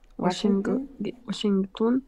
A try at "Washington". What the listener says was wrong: Washington, we don't pronounce the G.